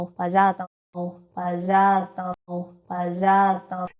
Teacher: But even here in Mendoza, sibilant friction, more like a zh, zho, can be heard creeping in.